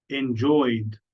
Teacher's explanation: oy is a vowel sound e d becomes D